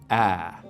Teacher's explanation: So in most accents of English, the vowel sound in words like cat, bag, what we call the trap vowel, is something like ah, right? We make it with the tongue cupped down low and towards the front of the mouth like this, ah.